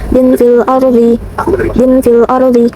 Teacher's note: Ada alif lam qamariyah. Terdapat alif lam bertemu dengan huruf hamzah, huruf qamariyah. Cara bacanya lam mati dibaca jelas.